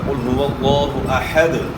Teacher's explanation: یہاں جو ہے دال میں جو ہے نا قلقلہ ہوگا، قل هو اللہ احد، یا ہم نے وقف کرنا ہے تو دال میں قلقلہ ہوگا